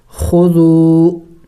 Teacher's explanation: کیا جاتا اور آگے ذال واو حروف مدہ میں سے ہے واو مدہ ہے تو اس کو کھینچیں گے ایک الف کے مقدار